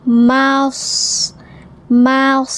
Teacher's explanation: Kemudian masah mim fathah shad sukun. Ma itu tipis , shad itu tebal.